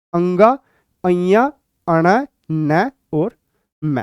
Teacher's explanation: यदि आप अपनी नाक को बंद कर दें तो आप इन पांच में से एक भी व्यंजन को नहीं बोल पाएंगे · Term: नासिक्य व्यंजन